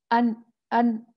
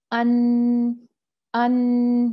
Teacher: ہم نے زبان رکھ کے بند کر دیا راستہ، تو نون کا جو غنہ ہے وہ اپنا راستہ نکال کے ناک کے ذریعے باہر آ جاتا ہے